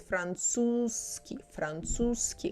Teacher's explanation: Kind of that z sounds like a long s.